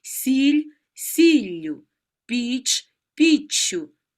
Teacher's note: кінцевий приголосний перед закінченням ю подовжується